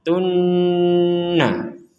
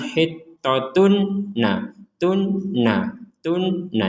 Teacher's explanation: Dhammatain, ya, tanwin dimasukkan ke huruf nun menjadi hittatun. Tun langsung dimasukkan ke sini.